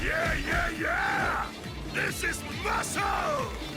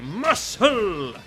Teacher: The extra emphasis on both syllables